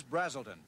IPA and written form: ˈbræzəltən (Braselton)